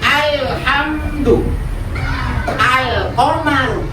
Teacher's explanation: membaca alif lam qamariah dengan tanpa bunyi tawallud